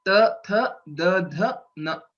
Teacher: when you pronounce, your tongue touches the teeth. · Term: dental letters